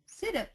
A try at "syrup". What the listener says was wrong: no get the smooth R syrup syrup perfect